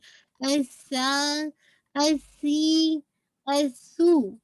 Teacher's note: हाम्स है लेकिन whistling sound नहीं है।